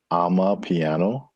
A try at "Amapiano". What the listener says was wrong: Amapiano. One word, Amapiano. Not I'm a piano, but ama. not I'm a piano, it's I'm a piano. Not ama. Ama, and it's her piano.